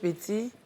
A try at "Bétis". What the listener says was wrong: Bétis. on prononce le S.